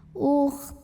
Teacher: kha-nya dibaca sama seperti biasa. Ta-nya ini harus tetap terbaca. Jadi jangan sampai tak terbaca ya.